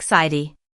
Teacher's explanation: Don't force the tea too hard. Just let your tongue tap the roof of your mouth gently and quickly, and it should sound like sidy. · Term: flapped tea